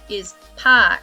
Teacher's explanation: in non-rhodic dialects like um like british english and australian english instead of pronouncing the r we lengthen the vowel before it